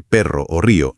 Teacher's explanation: La punta sí toca suavemente detrás de los dientes, pero sin apretar. El aire que viene de los pulmones es el que tiene que hacer vibrar la parte de atrás del paladar, casi la campanilla es como un roce. Entonces es un roce, una vibración muy suave. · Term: r fuerte